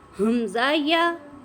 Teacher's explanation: حمزہ کو آپ نے تھوڑا سا جھٹکا لگایا اور یا کو پڑھا